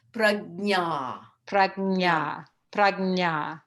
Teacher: sometimes when we get going, that j gets dropped and we end up with prajna